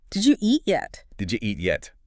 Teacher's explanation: We link the D and U sound, turning 3 words into 2 sound chunks. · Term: connected speech